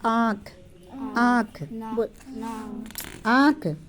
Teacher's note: इसका उच्चारण नाक और गले दोनों से होता है। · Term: चांद बिंदु